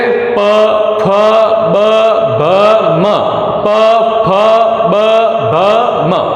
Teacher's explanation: प होता है, फ, ब, भ और म, ये प वर्ग में होते हैं। प, फ, ब, भ, म, ये जो भी वर्ण है ये सब के सब वर्ण दोनों होठों को चिपका के ही बोल सकते हैं। बिना टच किए तो हम बोल ही नहीं सकते इन वर्णों को। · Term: ओष्ठीय वर्ण